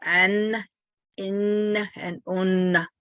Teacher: the nasal vowels, again, it's like speaking through your nose, like you have a stuffed nose